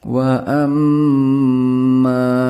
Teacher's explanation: Dalam wa amma, mim dengan tashdeed harus dibaca dengan bunyi sengau. Kemudian, huruf ma dibaca panjang, selama 2,5 alif, 3 alif, 5 harakat, atau 6 harakat.